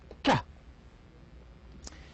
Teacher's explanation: it would be voiceless, velar, and stop. 3 parameters.